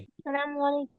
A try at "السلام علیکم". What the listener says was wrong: السلام علیکم. سلام نہیں بولتے بیٹا، السلام.